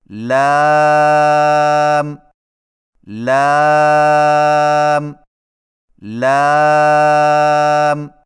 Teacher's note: لام کی ادائیگی میں زبان کے باریک کنارے کو اوپر والے دانتوں کے مسوڑوں سے لگا کر باریک آواز میں پڑھیں